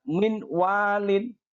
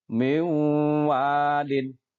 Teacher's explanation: Kita leburkan matinya kemudian kita masukkan ke huruf idgham di depannya dan dibaca dengan mendengung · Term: Idgham Bighunnah